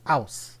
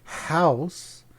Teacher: So in New York City, New York, they pronounce house as ouse. O-U-S-E. The H is completely silent.